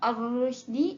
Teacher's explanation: Yang kedua adalah pada kalimah ar-rusydi, ia merupakan kalimah alif lam syamsiyah, ra tersebut berbaris dhammah, maka perlu kita baca secara tebal